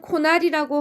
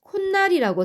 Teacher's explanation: 코날이라고 하지 않고 콧날이라고 소리냅니다 자 이때도 어때요 모음으로 끝나는이 말 뒤에 느 소리가 덧나는 현상이 일어났죠 · 모음으로 끝나는 이 말 뒤에 느 소리가 덧나는 현상이 일어났죠. 이 현상도 시옷을 첨가함으로써 설명할 수 있게 됩니다. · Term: 사잇소리 현상